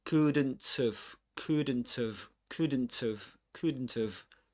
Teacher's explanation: Final consonant in this case is the t, right? So the t gets linked to the next vowel sound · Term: catenation